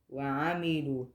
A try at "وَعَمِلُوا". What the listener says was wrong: وعملوا. Yeah, and it's not, so you were saying noon before. It sounded like a noon. It's not a noon.